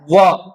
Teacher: व जिसमें दांत और ओष्ठ दोनों मिलते हैं। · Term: दंतोष्ठ